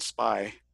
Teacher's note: the unaspirated one without the puff of air, like in spy or skid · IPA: /p/